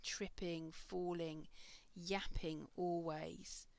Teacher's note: we've now got a trochaic rhythm briefly with these three verbs